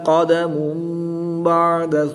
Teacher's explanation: دو پیش کی تنوین کو میم سے بدل کر غنہ زبانی کر کے پڑھیں گے